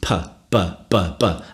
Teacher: Bilabial means lips. Bi means two, and labial means lips, so two lips plosive. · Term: bilabial plosive